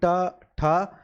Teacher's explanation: मूर्धन्य ध्वनियां वो होती हैं जो आपके मुख के ऊपर जो छत होती है उसके अगले वाले भाग से जिनका उच्चारण किया जाता है